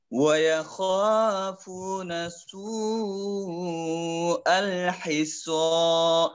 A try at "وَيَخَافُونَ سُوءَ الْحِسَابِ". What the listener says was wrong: سين سَا سِي سُو আল এরকম আর ফু এখানে টান একেবারে কম হয়েছে এভাবে শুনে নিন আগে وَيَخَافُونَ سُوءَ الْحِسَابِ